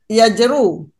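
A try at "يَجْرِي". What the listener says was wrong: Yajri. Wazan 11. Kan ada huruf ya akhirnya.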